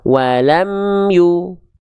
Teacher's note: jangan sampai memantulkan suara dari huruf mim sukun ketika idhar syafawi